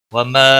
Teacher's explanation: مد منفصل ہے، 3 الف کے برابر کھینچ کر پڑھیں گے